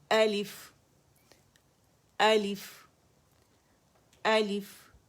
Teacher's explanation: الف الحلق سے حمزہ نکلے گا